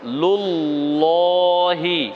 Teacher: মুখ স্বাভাবিক থাকবে জিহ্বাটা তালুর সঙ্গে লেগে উচ্চারণ একটু মোটা হবে